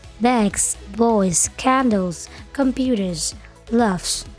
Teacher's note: S dibaca Z ketika terletak setelah voiced consonant dan vowel